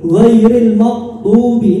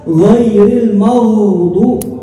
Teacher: الرخاوة هو جريان الصوت مع التفخيم في الغين